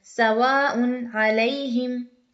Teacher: صرف تنوین کو ظاہر کر کے پڑھا ہے ہم نے، غنہ نہیں کیا، زیادہ نہیں رکے، ناک میں آواز زیادہ نہیں لے گئے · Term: اظہار